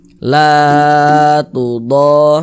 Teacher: La dipanjangkan 2 harokat